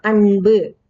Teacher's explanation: அன்புங்கும் போது நுனி நாக்குல இன் சொல்றோம்